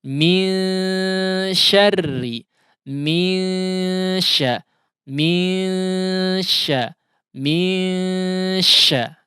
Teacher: Nah, di sini huruf apa yang diikhfakan adalah nun tentunya, namun huruf nun sukun di sini bertemu dengan huruf shin sehingga ikhfa yang terjadi adalah ikhfa yang tipis.